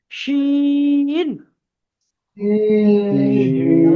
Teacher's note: আওয়াজটা একটু সিটির মতো উচ্চারণ হবে